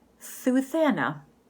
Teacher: It's when somebody says their S more like a TH. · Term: lisp